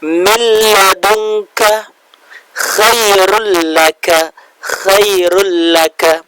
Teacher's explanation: nun sukun atau tanwinnya dilebur dengan tanpa dengung, bila gunnah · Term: idgham bila gunnah